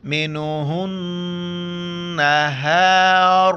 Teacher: میم کی طرح پورے قرآن مجید میں نون کے اوپر بھی یہ 3 دانت والا ہے وہاں پر ہمیں غنہ کرنا ہے ناک میں آواز چھپانی ہے. منہن نہار را کو موٹا کر کے پڑھنا ہے زبر ہے